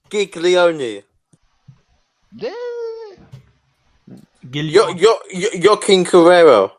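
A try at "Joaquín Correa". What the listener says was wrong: There was a few extra R's in there.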